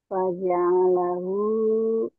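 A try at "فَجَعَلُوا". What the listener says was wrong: Nggak ada hu-nya. Faja'alu. Ayo diulang.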